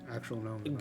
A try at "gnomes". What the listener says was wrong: They're not gnomes, dude. They're gnomes. It's the G silent.